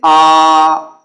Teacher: ऐसे स्वर जिनके उच्चारण में मुख द्वार पूरा खुला होता है उसे हम विव्रत स्वर कहते हैं।